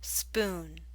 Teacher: The oo in spoon is longer.